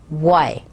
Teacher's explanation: W as in Y starts out with the lips firmly rounded, Y. So we sort of make a circle of the lips to pronounce that word. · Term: bilabial W